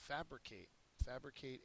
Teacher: fabricate is a verb first syllable is accented